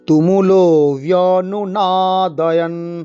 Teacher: তুমুলো, তুমুলোতে শুধু দীর্ঘস্বর লো। তুমুলো ব্যনুনাদয়ন, ব্যনুনাদয়ন, নাতে টান, দয়ন, ব্যনু নাতে টান, দয়ন কোনো টান নেই।